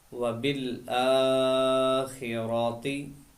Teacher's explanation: रा को मोटा पढ़ेंगे और हमजा खड़ा ज़बर है, उसको लंबा करेंगे